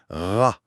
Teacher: L'arrière de la langue monte doucement pour venir effleurer le palais mou, au fond de la gorge.